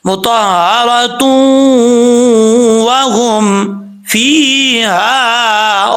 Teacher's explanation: اگر ملا کے پڑھیں گے تو پھر یہاں پہ ادغام یرملون ہوگا